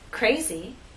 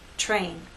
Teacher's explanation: R is a voice sound but after these three consonant sounds it begins voiceless and then becomes voice as we go into the next vowel sound so we don't have